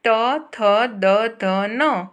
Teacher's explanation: वो टीथ से ही निकलता है, वो हमारे तालव्य से नहीं निकलता या कंठ से नहीं निकलता है